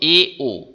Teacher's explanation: ই আর উচ্চারণ করলে যতটা ফাঁকা থাকে তার থেকে এ ও উচ্চারণ করলে বেশি ফাঁকা হয় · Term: অর্ধসংবৃত